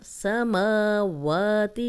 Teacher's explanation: جتنا میم کی زبر لمبی ہوگی اتنی واو کی بھی